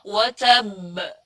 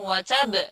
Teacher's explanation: kalau ada tasydid, kemudian waqaf di situ, berarti bacanya ditahan dulu, baru dipantulkan.